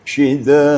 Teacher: kalau kita berhenti atau berwakaf pada syid, maka dia berubah menjadi mad arid li sukun. Boleh dipanjangkan sampai er tiga alif syid.